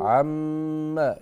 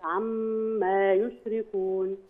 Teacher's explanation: الغنة في الميم المشددة